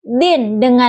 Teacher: Kata din huruf da makhrajnya itu di ujung lidah dan gigi seri atas. Huruf nun makhrajnya itu di ujung lidah dengan gigi seri bawah.